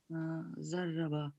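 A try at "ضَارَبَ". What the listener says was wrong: 4 letters. No, alif, there's an alif there. So it's a dharaba. That's again 3-letter verb. Sorry, a 4-letter verb. Yeah, 4-letter verb.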